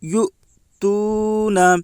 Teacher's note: واو ساکن سے پہلے پیش ہے، اس لیے واو مدہ ہوگا۔ واو مدہ کو ایک الف کے برابر کھینچ کر پڑھیں۔ معروف پڑھیں، مجہول آواز سے بچیں۔